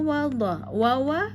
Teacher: wa tipis wa dua bibir